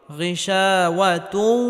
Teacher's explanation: ওয়াও আসার কারণে এখানে ইদগামে বা গুন্নাহ করে পড়তে হবে অর্থাৎ তানবিনকে ওয়াওয়ের সাথে গুন্নাহের সাথে মিলিয়ে পড়তে হবে